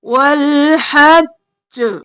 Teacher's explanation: جیم کو 2 بار ادا کریں گے، حج اور پھر ج کر کے قلقلہ کریں گے